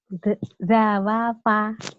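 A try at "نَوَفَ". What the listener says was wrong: Bukan, huruf za nggak bisa di depan ya. Itu huruf nun. Iya. Karena gandeng. Nawafa.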